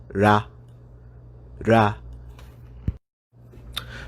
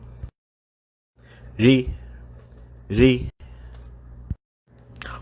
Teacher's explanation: The Japanese R sound is actually somewhere between an R and an L sound